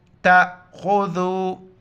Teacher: یہاں پر جھٹکے کے ساتھ پڑھیں گے، تا امزا زبر تا، خا کو موٹا کریں گے اور ذال کے وقت زبان باہر نکال آئے